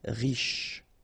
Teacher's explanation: Détendu, accent aigu, et, and then en, en, détendu. Riche, final not really pronounced, so sh is the last sound